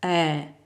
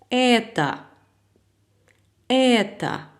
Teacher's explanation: La voyelle E qui se prononce de la manière très ouverte